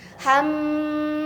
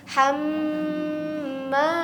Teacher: Jadi jangan hanya hamma tapi hamma tahan. Itu kalau nun bertasjid, mim bertasjid itu tahannya begitu lama. Hamma sampai masuk ke pangkal hidung. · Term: ghunah musyaddadah